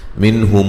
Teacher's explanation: یہاں نون ساکن کا اظہار ہے، غنہ نہیں کریں گے